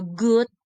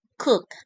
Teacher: This pair of a word demonstrate how the single difference is a voicing between the g is a voiced velar, plosive or stop, and k voiceless, velar, plosive or stop